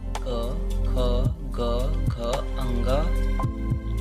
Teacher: क वर्ग के सभी वर्णों का उच्चारण कंठ द्वारा किया जाता है